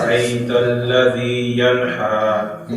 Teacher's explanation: یہ حلق سے نہیں آئے گا ینہا سینے سے